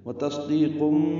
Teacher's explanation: تنوین کے بعد با آنے کی وجہ سے، یہ بھی اقلاب ہے، یعنی قن کی جگہ کم پڑھنا ہے، نون کی جگہ میم پڑھنا ہے ، اس کو اقلاب یا ابدال کہتے ہیں، یعنی حرف کو